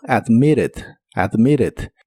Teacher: En inglés americano suelen pronunciar la doble T de esta palabra como R, así que suena como admitted, admitted.